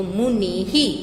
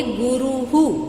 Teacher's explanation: तो ये जो विसर्ग है वो उसको लगी हुई मात्रा के अनुसार उसका उच्चारण किया जाता है, उसी की तरह इसको, उसकी मात्रा की तरह ही उसको बोला जाता है।